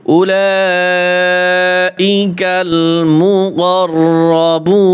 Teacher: এখানে মদের হরকত রয়েছে। মদের হরকতের পরে যদি গোল হামজা থাকে তাহলে মধ্যে মুত্তাসিল হয়, 4 আলিফ টেনে পড়তে হয়। এবং সংক্ষেপে বোঝার জন্য উপরে একটি বাঁকা চিহ্ন রয়েছে।